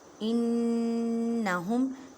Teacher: الا انہم انہم، نون مشدد ہے، اس وجہ سے گنہ کریں، گننے کا مطلب آواز کو ناک میں لے کے جانا ایک الف کی مقدار میں